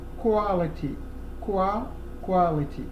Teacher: when we combine the Q and the U, okay, it gives us a sound which is KW. You read it just as KW.